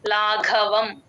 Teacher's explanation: second ఘ ఒత్తు ఘ అండి గమనించండి ఇది మహాప్రాణం పెట్టి చెప్పాలి